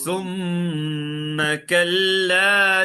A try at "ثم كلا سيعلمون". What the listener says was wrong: سيعلمون. ثم نہیں, ثا زبان کی نوک باہر. ثم كلا سيعلمون.